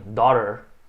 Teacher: Certas pessoas têm um pouquinho de dificuldade de usar esse sotaque americano, onde o T é bem fraquinho. Daughter. Se você preferir, pronuncia mais forte.